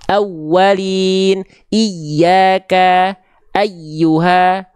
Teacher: nabar itu pelafalan yang lebih kuat dibanding sekitarnya, yaitu ya bertasydid dan waw bertasydid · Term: naber